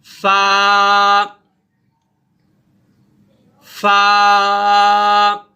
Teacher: آپ کا جو نیچے کا ہونٹ ہے اس کا تر حصہ اور اوپر کے جو 2 دانت ہیں وہ جب نیچے لگیں گے تو یہ فا ادا ہوگا. یعنی شفت سفلا کا تر حصہ ثنایا علیہ کے کنارے فا, جب آپ نے اوپر والے دانتوں کو نیچے والے ہونٹوں سے لگائیں گے تو یہ فا ادا ہوگا.